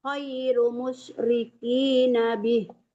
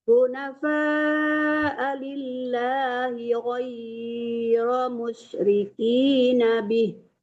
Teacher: Ghai bukan khai ya, tadi kedengarannya khai dibaca.